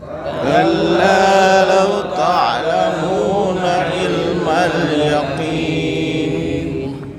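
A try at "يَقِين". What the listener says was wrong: Yaqi. Ya, bukan ki tapi qi.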